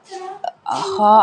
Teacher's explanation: خا ادا ہوتا ہے حلق کے اوپر والے حصے سے